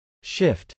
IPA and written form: ʃˈɪft (shift)